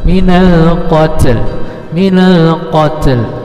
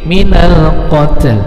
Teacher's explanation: Cara membacanya ini mewakafkannya minal qat, tetapi ada l-nya sedikit.